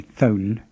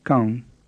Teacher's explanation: in burmese you don't let your tongue touch the roof of your mouth you don't say thon you say it's like the nasalized vowels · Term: open nasal sound